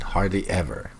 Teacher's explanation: Notice the downward intonation.